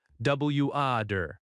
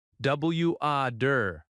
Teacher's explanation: In American English, the T often sounds like a soft D,